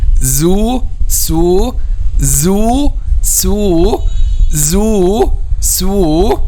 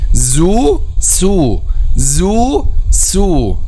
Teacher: Okay, we have also this zu, su, zu, su, zu, su. Okay, so the difference also is just the vibration of the vocal cords. Su, there is no vibration. Zu, there is a vibration.